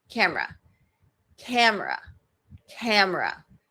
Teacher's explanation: So I have primary stress on the first vowel